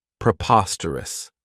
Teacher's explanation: This adjective has 4 syllables, and the stress is on that second syllable, preposterous. Remember that OS has that schwa, that sound.